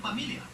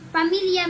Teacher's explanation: Filipinos will substitute an F with a P.